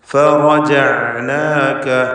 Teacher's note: റായിനെ പൂർണ്ണമായി തഫ്ഖീം ചെയ്യുക. മഫ്തൂഹാണ് എന്നതുകൊണ്ട് റായിനെ തഫ്ഖീം.